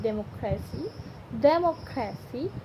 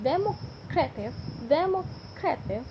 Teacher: the noun democracy has stress on the second syllable, but the adjective democratic places stress on the penultimate syllable